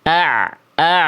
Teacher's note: Karena bunyi ain sukunnya terbawa huruf to. To itu memang huruf yang tebal tapi ainnya huruf yang tipis.